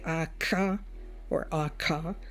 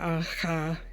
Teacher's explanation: K is a plosive because when you say aka or aka, there is this silence. It's not aha, aka.